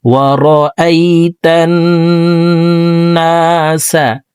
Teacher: হরকতের বামে নুনে মিমে তাসদিদ হইলে সর্ব অবস্থায় নাকের বাসি থেকে গুন্নাহ করিয়া পড়িতে হয়। 3 সেকেন্ড পরিমাণ গুন্নাহ করে পড়ব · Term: ওয়াজিব গুন্নাহ